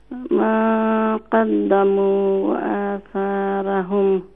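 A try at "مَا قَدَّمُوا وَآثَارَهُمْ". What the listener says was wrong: জি তো মা কদ্দামু ওয়া আসা সার বাদে র আইছে দেখলানি র এখানে র এটা খোকা হইতে পারবা না এটা ফুর না বারিক জি খানে খানে ফুর হইব জি আসারহুম ইনো রাজে আইছে সারফরে জবর রারুফরে জবর ইনো পুর হইব নাই নি খানে পুর হইব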